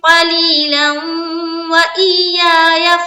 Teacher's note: ہم نے یہاں پر جب پڑھا تو لام کو ہم نے واو سے ملا دیا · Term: ادغام ناقص